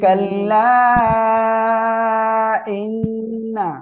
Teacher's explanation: ইন্না এখানে ওয়াজিব গুন্না হবে